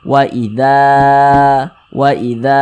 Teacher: panjang seperti itu makanya dza dibaca panjang ini namanya Mad thi'i panjangnya dua harakat dua harakat itu untuk lebih mempermudah kita dalam belajar kira-kira temponya itu dua ketukan